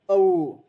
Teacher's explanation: वो को देखिए, अ प्लस उ, उच्चारण गति देखिए अ से लेकर उ की ओर जाती है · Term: संध्या अक्षर